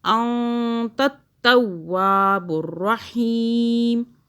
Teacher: اخفا کریں گے یعنی کہ نون چھپائیں گے، زبان تالوس ٹچ نہیں کریں گے، انت التواب الرحیم، پھر پڑھ لیتے ہیں، انت التواب الرحیم۔